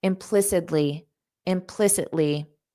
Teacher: Native speakers pronounce that T as a soft D